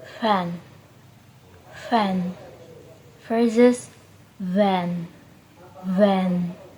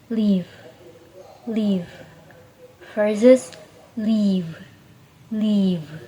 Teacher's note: F is a voiceless labiodental fricative, while V is voiced labiodental fricative. Both are made by touching the top teeth to the bottom lip.